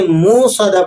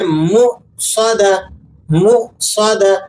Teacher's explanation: صحیح طریقہ یہ ہے کہ آپ نے منہ میں حمزہ کو واضح کریں اور پھر صاد کو موٹا کر کے پڑھیں